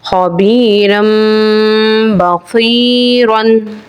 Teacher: मिसाल है रा के ऊपर दो जबर तनवीन के हैं और तनवीन के बाद हर्फ बा आ रहा है यानी इकलाब का कायदा है और तनवीन की आवाज यानी मीम की आवाज से बदल के पढ़ेंगे · مثال ہے را کے اوپر دو زبر تنوین کے ہیں اور تنوین کے بعد حرف با آ رہا ہے یعنی اقلاب کا قاعدہ ہے اور تنوین کی آواز یعنی میم کی آواز سے بدل کے پڑھیں گے